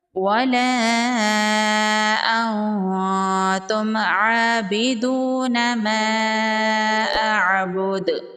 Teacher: میم کا اظہار ہوگا، میم پر غنہ نہیں کریں گے۔ کھڑی زبر ہے، 1 الف کے برابر کھینچ کے پڑھیں گے۔ · مد منفصل ہے، 3 سے 4 الف کے برابر کھینچ کے پڑھیں گے۔